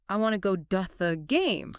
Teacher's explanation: You're fighting against the natural linking of American English. A native speaker would link those words together, and the flap t rule would turn to into du. The fluent version is I want to go da game.